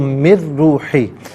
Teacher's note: نون ساکن کو درمیان سے ہم ظاہر ہے کہ اس کی آواز نہیں آئے گی، را کی آواز کو ادا کیا جائے گا ، نون ساکن کو ہم نے را کے ساتھ ملایا، تو